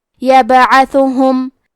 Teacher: عین کے ادائیگی حلق کے درمیان والے حصے سے ہے. ثا اور ہا اور میم پہ پیش ہے، تو ہم یہ تینوں پیش کو ظاہر کریں گے.